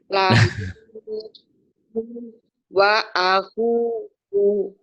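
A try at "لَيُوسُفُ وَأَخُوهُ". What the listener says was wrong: Yusufu wa akhuhu. Pendek semua Bu. Wa akhuhu. Karena kalau baca Quran ini wa akhuhu. Layu sebelum berkembang. Jangan layu sebelum. Layu sufu. Layu sufu wa akhuhu.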